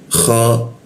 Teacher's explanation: Kha di atas jakun dia posisinya. Ada ngoroknya dia.